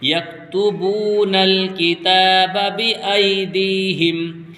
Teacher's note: الْكِتَابَ بِأَيْدِيهِمْ فَوَيْلٌ لِّلَّذِينَ يَكْتُبُونَ الْكِتَابَ بِأَيْدِيهِمْ، با واو پیش بو، یہ واو مدہ ہے اس لیے بو کو کھینچ کے پڑھیں گے